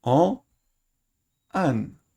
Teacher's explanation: Si le masculin se termine par une nasale, elle devient dénasalisée.